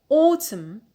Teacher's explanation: Stress on the penult because we have short vowel in the last syllable, so we have applied rule 2a.